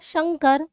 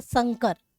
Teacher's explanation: पहले वाले में तालव्य श है और दूसरे वाले में स है